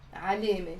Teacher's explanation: it's basically the fatha before the te marbuta that's giving the e sound